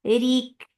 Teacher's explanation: And give hams on kaf. And hams is flow of breath. · For kasra, give E sound and keep raw light. Rik. And give hams on kaf.